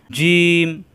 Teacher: জিহ্বার মাঝখানে উপরে তালুতে চাপ দিয়ে শক্ত করে উচ্চারণ করতে হয়